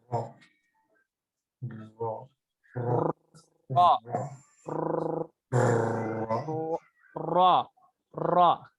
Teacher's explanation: जबान के किनारे की पोस्ट जब ऊपर वाले 3 दांतों के मसूड़ों से लगे तो इससे रॉ अदा होता है और रॉ हमेशा मोटा पढ़ा जाता है।